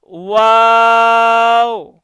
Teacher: দুই ঠোঁট গোল করে সামান্য খোলা রেখে উচ্চারিত হয়